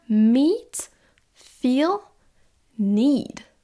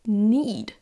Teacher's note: Le double E, comme dans meet, feel, need, etc., va être toujours prononcé avec un I long.